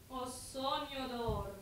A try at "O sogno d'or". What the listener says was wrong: But don't go to the G end too quickly. sogno d'or. Enjoy the long vowels.